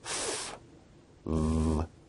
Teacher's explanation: sounds are produced with the upper teeth and the lower lip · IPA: [ f ] [ v ]